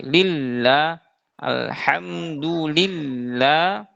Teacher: tidak terlalu jelas tasyidnya. Tapi harusnya kita lebih ditekan lagi.